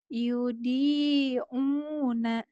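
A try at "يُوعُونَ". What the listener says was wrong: Yobi. B-nya bulat. Yobi. Bukan yudi ya. Kalau yudi dal. Yobi.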